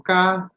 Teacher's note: Lo digo con Z, la lengua sale de los dientes. Entonces ahí tengo que corregir la posición.